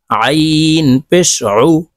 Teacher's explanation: আইন হরফ হলকের মধ্যখান থেকে চাপ দিয়ে উচ্চারণ করতে হবে